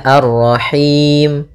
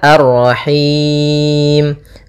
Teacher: boleh kita panjangkan hi-nya karena bertemu dengan huruf mad, boleh 2, boleh 4, boleh 6. Maka kalau 2 misalnya Ar-Rahim, kalau 4 Ar-Rahim, kalau 6 Ar-Rahim. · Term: mad arid lis sukun